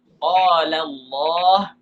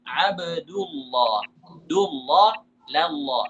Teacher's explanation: Dibaca tebal ketika sebelumnya berharakat dhammah atau berharakat fathah